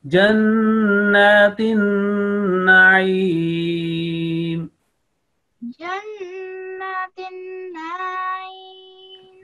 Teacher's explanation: After noon, holding your nasal sound on noon, and just after that ayin. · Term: noon mushaddad